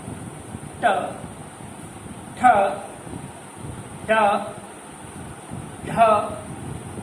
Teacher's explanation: जीवा ऊपर को उठती है, थोड़ा रोल होती है, और उसको सिर्फ टच ना होकर हल्की सी थपड़ देती है। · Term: मूर्धन्य ध्वनि